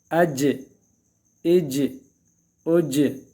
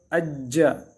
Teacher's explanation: جا جی جو، جا جی جو. اج اج اج، قلقلہ کرنا ہے اس میں، آواز کو حرکت دینا باقاعدہ اپنی طرف سے. جیم مشدد ہو تو اج، آواز حرف مشدد کو سختی کے ساتھ پکڑنا ہے، اور یہ چونکہ قلقلہ میں سے ہیں اس میں مزید حرکت دینی ہے۔